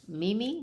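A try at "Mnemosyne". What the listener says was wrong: No. Nimi. The M is silent, like as a mnemonic. And what's left is Nimi.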